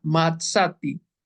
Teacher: Y la Aleph está completamente muda, sin vocal, sin llevar, sin nada.